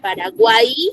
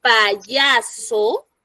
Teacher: está sonando como vocal Paraguay ya pero por ahí si yo menciono payaso ahí sí me funciona como consonante porque yo no digo pa y aso vá ahí Sí suena